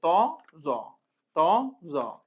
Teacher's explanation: জ জিহ্বার আগা থেকে মোটাভাবে আদায় হবে, একই জায়গা থেকে।